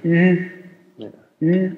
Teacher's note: das Ü steht zwischen u und i akustisch